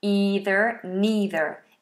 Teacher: in America this American English these are either and neither with a long e either neither in British English it's an i dong either neither